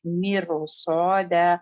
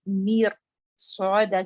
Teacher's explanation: تو نیچرل یہی ہے کہ آپ رو کو بولتے ہوئے منہ پہ ہیوینس برقرار رکھیں اور صاد کو بھی ادا کریں